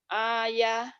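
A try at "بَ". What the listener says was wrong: Ba. Bukan ayah. Ba. Titiknya di bawah.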